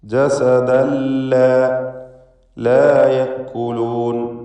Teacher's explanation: ജസദല്ല തൻവീനും ശേഷം ലാമും. ഇദ്ഗാം ബിഗൈരി ഗുന്ന നൽകി തൻവീനിനെ ലാമിലേക്ക് പൂർണ്ണമായും ലയിപ്പിച്ച് മണിക്കാതെ ഉച്ചരിക്കണം.